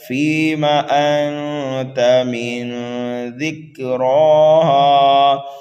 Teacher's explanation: را کے اوپر کھڑا زبر ہے، را کو پر پڑھیں گے، ایک الف کے برابر کھینچ کر کے پڑھیں گے، ہا کو بھی ایک الف کے برابر کھینچ کر کے پڑھیں گے۔